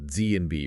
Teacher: you still have that periodic vibration of your vocal cords which gives them that sort of buzzy quality and a pitch, but you also have the periodic noise created by the constriction in your vocal tract. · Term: voiced consonants